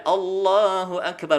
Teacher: lem dibaca tebal ketika kita mengucapkan lafadz Allah